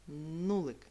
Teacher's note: Прислухайся до першого звука приголосний твердий звук н